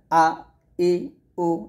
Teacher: হলকের শুরু থেকে আপনাকে হামজার উচ্চারণ করতে হবে